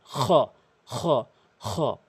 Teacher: খলকের শেষ থেকে উচ্চারণ করবেন।